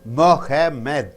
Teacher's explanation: Mo, that should be stressed. Mo, ha, less stressed. Med, still less stressed, right?